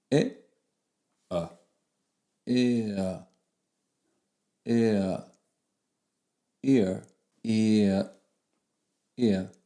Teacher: So this vowel is actually formed from moving from one vowel to the next, or gliding from one vowel to the next. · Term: diphthongs